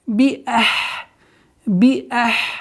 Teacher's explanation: Хамза четко произносим и уходим на гортанный звук с сукуном.